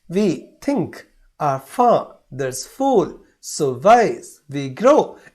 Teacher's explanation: और इसमें वी थिंक, आवर फादर्स फूल, सो वाइज वी ग्रो, इस प्रकार का इंटोनेशन एक चढ़ाव उतार शब्दों का बनता है। पहले शब्द को नीचे रखना, ऊपर के शब्द को स्ट्रेस करना, अनस्ट्रेस, स्ट्रेस, अनस्ट्रेस, स्ट्रेस, इस प्रकार का वो क्रम बनते जाता है। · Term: iambic pentameter